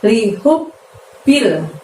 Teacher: hu-nya yang lembut dari tenggorokan bagian tengah ya. Lalu di situ kita harus tekan, kita harus tahan hub segini selama 2 harokat baru bunyi bil, karena ada ba tasydid di situ ya.